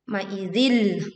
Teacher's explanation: kasrah tanwin dileburkan ke huruf lam tanpa disertai dengung.